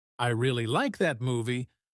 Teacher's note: the word really is stressed because it's important.